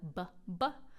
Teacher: A B sound comes from your lips closing together, like a buh.